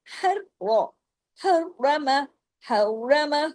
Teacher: र को सख्ती से पढ़ना है क्यों तशदीद है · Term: र डबल